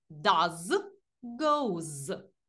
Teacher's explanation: до цих дієслів ми додаємо закінчення і S і вимовляється воно як з